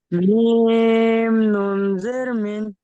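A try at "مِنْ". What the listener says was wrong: নুনের টানটা হয়নি, মিম নুন জের মিন।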